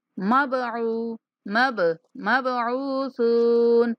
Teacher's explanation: बा के ऊपर कलकला करेंगे, यानी बा की आवाज को थोड़ा सा हिला के पढ़ेंगे।